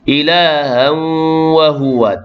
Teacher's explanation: tanwin bertemu dengan waw, idgham ma'al ghunnah memasukkan tanwin dengan waw beserta dengung. Kemudian juga diakhiri dengan mad arid li sukun, boleh baca 2, 4, 6 harakat.